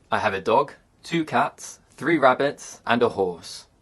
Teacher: intonation often Rises with lists of information but Falls at the end of the sentence this is a useful way of indicating that you finish speaking